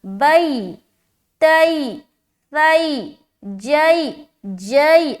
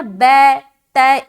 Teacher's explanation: واضح ہو رہی نا لائن میں کہ یا ساکن سے پہلے زبر ہو تو یا لین ہوگی، یا لین کو نرم آواز کے ساتھ جلد اور معروف پڑھے۔ نرم آواز کے ساتھ پڑھنا یعنی کہ سختی نہیں بنانی، اور جلد پڑھنا یعنی کہ اپنی آواز کو لمبا نہیں کرنا، اور معروف پڑھنا یعنی کہ آپ کی آواز مجہول نہ ہو۔